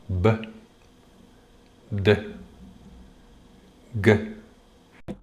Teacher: 再读b,▁d,▁g。喉咙就会有明显的震动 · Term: 浊音